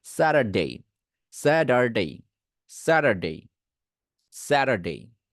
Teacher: দুটো ভাওয়েলের মাঝখানে টি আছে, সেটাকে ডি করতে পারবো। সো এই স্যাটারডে, আমি একটু আগে উচ্চারণ করলাম স্যাটারডে, এইটাকে এখন টি না বলে ডি বলতে হবে।